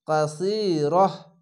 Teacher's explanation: গোল তায়ের কাছে থামতে গেলে এটি হা হয়ে যাবে